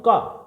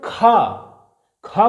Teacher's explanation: देखिए अल्प प्राण जिनको उच्चारण करने में हमें क्या है भैया, कम जोर लगाना पड़े, सीधा सीधा मैं बोलता हूं का, लेकिन खा को बोलने में क्या है, ज्यादा श्वास वायु की आवश्यकता है, ज्यादा ताकत लगानी पड़ रही है। तो जिन वर्णों के उच्चारण के लिए ज्यादा ताकत लगानी पड़ती है उनको बोलते हैं महाप्राण।